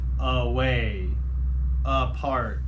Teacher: it sounds like it's the short you uh sound even though it's spelled with the letter A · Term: schwa sound